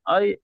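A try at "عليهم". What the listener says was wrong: আইন যাবার আ, টান হবে না। আইন যাবার আ, লাম ইয়া যাবার লাই, আলাই। ইন্নাহা আলাইহিম, আলাইহিম। আলা, এরকম ফুলটা তাহলে প্রত্যেকটা টান হয়ে যাবে, এটা ভুল হয়ে যাবে। হ্যাঁ, এখানে জবর আছে, এখানেও জবর আছে, ইয়াইনিন আছে, সব তাড়াতাড়ি পড়তে হবে। আলাইহিম, ইন্নাহা আলাইহিম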